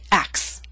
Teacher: three consonant sounds c t s these are voiceless sounds and we drop the middle one which happens to be a t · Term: omit the T